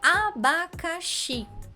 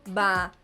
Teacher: Abacaxi é uma palavra de 4 sílabas. Abacaxi. Xi é o mais forte, mas esse i final não tem acento. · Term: sílaba tônica